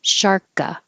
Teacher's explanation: Just hold your tongue back there in the K position. This first K will connect to the A because there's a vowel after it. Sharka. But there's nothing after this K, so you just stop.